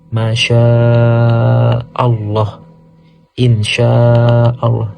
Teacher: panjangnya itu kira-kira 5 harokat atau 2 setengah alif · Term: mad wajib mutasil